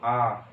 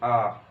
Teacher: कंठ्य स्वर क्यों कहते हैं इसे हम, कंठ्य स्वर हम इसे इसलिए कहते हैं, आप बोल के देखो आ, तो आपका ना जीभ हिलेगा ना कुछ हिलेगा, होठ भी नहीं हिलेगा, खाली कंठ से एक आवाज आएगी आ। ठीक है ना, तो इसीलिए इसको क्या कहते हैं, कंठ्य स्वर।